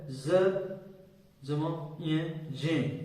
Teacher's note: ये ज्ञ है जिसका उच्चारण हमने गलत करना शुरू कर दिया है, और इसका सही उच्चारण है ज जमा य, जे। इसका सही उच्चारण होगा जे, लेकिन हमने इसको ज्ञ बोलना ही शुरू कर दिया है और इसी को हम सही मानते हैं।